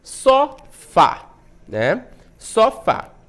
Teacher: É uma oxítona, porque a última sílaba é a mais forte.